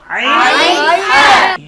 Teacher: কণ্ঠনালীর মধ্যখান থেকে, হলকের মধ্যখান থেকে 2টি হরফ উচ্চারিত হয়